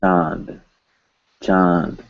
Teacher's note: No, that's hard to say, but easier to say chand. So you will hear nasalized vowel followed by N. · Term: epenthesis